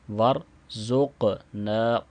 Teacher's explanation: قاف پہ کلکلا کریں گے اور اس کو موٹا بھی پڑھیں گے، چونکہ یہ حروف مستعلیہ میں سے بھی ہے، اور چونکہ ساکن ہے تو قاف جب ساکن ہوتا ہے تو اس پہ بھی کلکلا ہوتا ہے۔